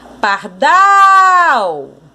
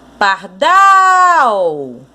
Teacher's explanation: A sílaba tônica, que é o dal, é a última sílaba.